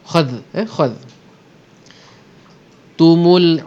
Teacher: Memang kha tu tebal, tapi jangan bawa ketebalan kha dalam zal. Kha tu memang kita tebal, tetapi bila sampai kat zal kita nipiskan balik.